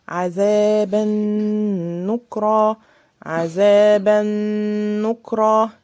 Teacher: الغنة دي مش بتاعة التنوين، لا دي بتاعة النون. عذابا نكرا، وشرطها ان النون تبقى مشددة.